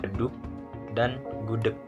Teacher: K aksen merupakan bunyi hambat velar tak bersuara dan lepas jika terdapat di akhir kata